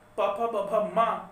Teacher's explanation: क्या प फ ब भ मा अगर इसका उच्चारण स्थल हम होंठ मानते हैं, क्या वे प फ ब क्या होंठों से टकरा करके ध्वनि नहीं बाहर आ रही है